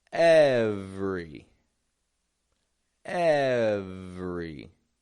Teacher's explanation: Kind of dropping that E that's in the middle right out of the word.